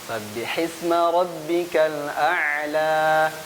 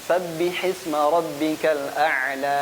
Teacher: di akhir kepanjangan jadi 3 harokat, yang benar 2.